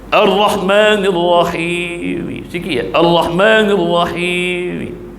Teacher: Boleh cukup 2 harakat, baris kasrah ataupun kasratain yang ada pada huruf terakhir tadi dilafazkan kembali sekadar bunyi 1/3 dengan suara yang sangat perlahan. Yang ini nama bacanya raum ma'al qasri.